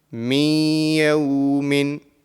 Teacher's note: And this is ya mushaddad. And when we are joining the mim into the ya mushaddad, the nasal sound will be produced.